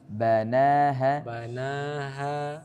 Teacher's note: Nah, bana jangan ditasydid.